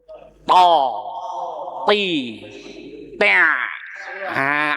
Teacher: Tak lidah di gusi atas